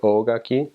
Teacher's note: the O needs to be long or else it means something completely different